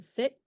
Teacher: Short I, near closed, near front, unrounded vowel.